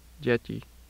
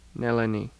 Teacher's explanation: palatalization of dentals and the lateral